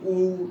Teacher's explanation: आ ऊ, आप बोलेंगे ऊ तो पीछे से आवाज आ रही है, प्रोनाउंसिएशन पीछे से हो रहा है ना। बड़ा ऊ बोलते हैं वैसे, तो इसके भी जीभ के या जिह्वा के पश्च भाग से आवाज निकलती है।